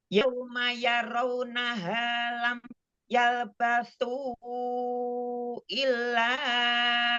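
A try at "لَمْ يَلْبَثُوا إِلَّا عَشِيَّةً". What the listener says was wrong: Jangan kepanjangan. Illa asyiyatan. 2 harokat aja.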